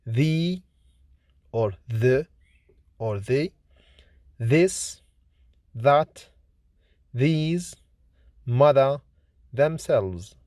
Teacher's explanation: Th is voiceless, fortis, dental, fricative consonant, like in think, three, theory, birthday, Thursday, thousand. The is voiced, lenis, dental, fricative consonant